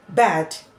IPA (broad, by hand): bæd